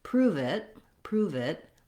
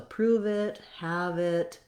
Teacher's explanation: you can almost think of it as the v sound going on to the word it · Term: link that word